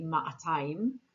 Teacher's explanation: Jerusalemites actually pronounce the aleph and they say ma'atayim